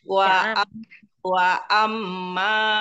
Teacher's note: Wa amma, setiap ada mim yang bertasydid, itu di gunnah.